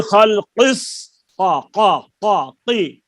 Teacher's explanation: خیر یہ ابھی قاف پر نہیں ہوا کیونکہ زیر باریکی کی طرف لے جاتی ہے نا، تو زیر کی وجہ سے قاف کو جتنی اس کی ضرورت ہے اس کا پر ہونے کی وہ پر نہیں ہو رہا